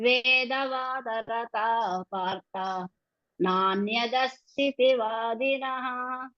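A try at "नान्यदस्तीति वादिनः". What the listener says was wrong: మీరు నాణ్యదస్థితి అంటున్నారు. దస్థితి దీర్ఘం చూడం. దీర్ఘం అంతే.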